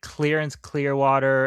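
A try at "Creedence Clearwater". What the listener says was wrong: Credence Clearwater. you said Clearance.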